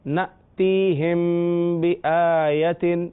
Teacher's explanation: میم ساکن کے بعد جب با آ جائے تو اخفاء شفوی